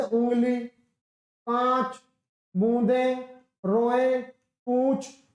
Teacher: मुंह से अधिक सांस निकलती है तथा नाक से बहुत कम सांस निकलती है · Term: अनुनासिक